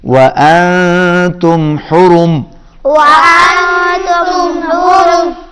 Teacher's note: حرم، حرم حرم، حلق میں سے ادا ہوگا، را موٹا، اور وانتم نون کے اوپر اخفا کریں گے، آواز ناک میں جائے گی